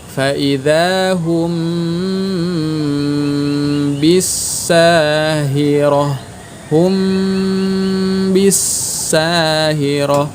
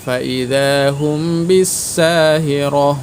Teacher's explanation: mim matinya dipanjangkan dulu, jangan terburu-buru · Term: gunnah